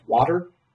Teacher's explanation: t being realized as a flap so this is associated with uh the american production of tea when it occurs between vowels uh so we're like water the drink being produced as water